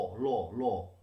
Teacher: আমরা যখন ল উচ্চারণ করি তখন শ্বাসবায়ু আমার দুপাশ দিয়ে বেরিয়ে যাচ্ছে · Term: পার্শ্বিক ব্যঞ্জন